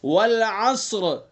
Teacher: باریک پڑھیں گے، ماشاءاللہ، اچھا یاد کیا، ماشاءاللہ۔ والعصر، ہم نے وقف کر دیا تو را ساکن، ساکن ما قبل متحرک والا قاعدہ ہو گیا، تو را کو پر پڑھیں گے، اور اگر وقف نہیں کریں گے تو پھر را کو باریک پڑھیں گے۔